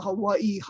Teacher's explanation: the v sound comes after a front vowel the w sound comes after a back vowel and with the ah can go either way